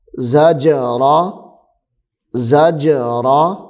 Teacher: جیم حروف قلقلہ ہے اور یہاں پہ ساکن بھی ہے جیم، تو اس کو ظاہر کر کے پڑھیں گے